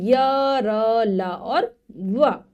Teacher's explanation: हमारी जो जिह्वा है ऊपर की तरफ तालू की तरफ जाती है, लेकिन पूरा उसको छूती नहीं है, इसीलिए बीच में स्थित है। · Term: अंतःस्थ व्यंजन